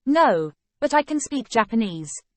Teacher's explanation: pronunciation can is normally unstressed but is stressed for emphasis